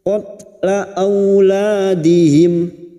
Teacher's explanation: fathah bertemu waw sukun, kita lunakkan huruf lin. Aula lam alif dua harakat kita panjangkan.